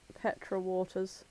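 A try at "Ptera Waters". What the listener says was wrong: Yeah, Terra Waters. The P's silent.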